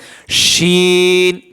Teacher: আর শিন অক্ষর জিহ্বার মধ্যকান তার বরাবর উপরে তালুর সঙ্গে লাগায় জিম শিন ইয়া, এই শিন অক্ষর সেখান থেকে উচ্চারণ হয়। জিহ্বার মধ্যকান তার বরাবর উপরে তালুর সঙ্গে লাগায়া শিন অক্ষর উচ্চারণ করতে হয়।